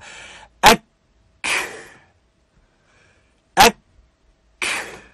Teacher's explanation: And so one half of the letter has shidda, one half of the letter has hams.